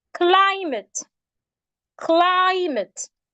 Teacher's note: So we have words like climate, climate. It has two syllables and it's a noun. So we're stressing the part, the first syllable. And that is why the CLI is written in capitals.